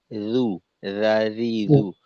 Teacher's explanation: আর জালের উচ্চারণ কিন্তু মাখরাজে রইলো না, জু হয়ে গেল এইটা। জু, জিহ্বার আগা সামনের উপরের দুই দাঁতের আগার সঙ্গে লাগবে।